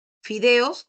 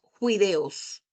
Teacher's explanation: Luego también otro que tú lo has visto en el Amazonas, o lo has escuchado de nuestros amigos amazónicos, ¿no? Que reemplazan la F por la J